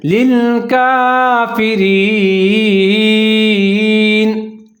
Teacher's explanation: کاف کے اوپر کھڑا زبر ہے، اس کو ایک الف کے برابر لمبا پڑھیں گے